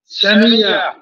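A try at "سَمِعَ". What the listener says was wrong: সামিআ, সামিআ, আইনের উচ্চারণটা ক্লিয়ার করেন, সামিআ। সবাইকে ধমক দিলেন, সামিআ, যেন ভয় পায় এরকম। হ্যাঁ, ইয়া কেন হচ্ছে? সামিআ,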